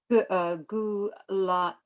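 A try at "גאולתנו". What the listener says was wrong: It's geula. There's a do dots have a sound. It's not goo. Geula tenu.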